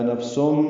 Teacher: سین پر تنوین ہے اور اس کے بعد میم آنے کی وجہ سے سم میں ادغام ناقص مع الغنہ ہے